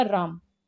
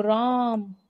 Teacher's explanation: त्रिमात्रिक स्वर क्यों कहते हैं? क्योंकि इसमें 3 मात्रा का समय लगता है। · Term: प्लुत स्वर